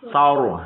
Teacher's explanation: Sarnya tipis, ro-nya matinya besar. Saur, ya. Jadi inilah Lah, sa bukan, awas, sa bukan sa.